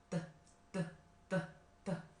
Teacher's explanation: Bunyi t, kita hambat di lidah dan di atas gusi kita.